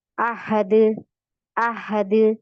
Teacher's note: तो दाल में कलकल की सिफात पाई जाती है